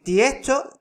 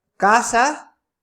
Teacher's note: Esto es palabra como tiesto, que se dice tiesto, la S se aspira, ¿vale? Casa, se aspira la S final, parece una H al pronunciarse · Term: aspiración de la S final